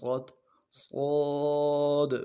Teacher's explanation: لفظ صاد کو پور پڑھنا ہے، جماؤں کے ساتھ پڑھنا ہے۔ سیٹی والا حرف ہے، اس کی سیٹی بھی موٹی نکلے گی۔